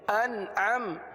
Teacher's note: نون پر قلقلہ نہیں ہوتا، نون میں آواز کو جمائیں گے، قلقلہ نہیں ہونے دیں گے